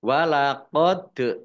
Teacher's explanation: dal sukun bacaan kolkolah dibaca memantul ditampakkan pantulannya